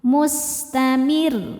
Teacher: Dan karena rnya bertasydid ketika kita berhenti pada huruf bertasydid yang bukan huruf qalqalah baju di toko, bukan huruf ghunah nun dan mim berhentinya pakai in nabar. Naikkan intonasi suara kita. · Ketika berhenti di ro rnya disukunkan dan dibaca secara tarqik. Karena sebelumnya ada harakat kasrah maka rnya tipis